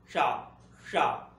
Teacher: तालु से आवाज आती है, तालु पीछे की तरफ लगता है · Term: तालव्य शा